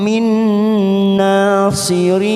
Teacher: Lahum min, ada huruf nun sukun bertemu nun warna merah. Ini termasuk bacaan idgham bi gunnah karena ada nun sukun bertemu nun.